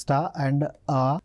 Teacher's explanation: Final R is not pronounced.